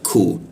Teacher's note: Huruf Q itu di siku tonggorokan. Lidahnya kita turunkan sehingga ada hembusan udara ketika membaca ku.